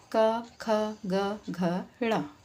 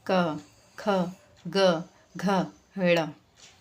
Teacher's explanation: इसमें हम जो जीभ है हमारी जो टंग है वो हमारे पैलेट यानी कि हमारे तालू को टच करती है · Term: क वर्ग